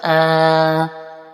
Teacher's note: تو کھڑا زبر کی جو مقدار ہے لمبا کرنے کی وہ بھی اتنی ہی ہے جتنی کہ حرف مدہ کی